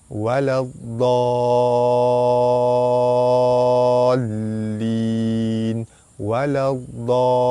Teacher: Cara baca dia dibaca panjang 6 harkat. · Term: mad lazim kilmi musaqqal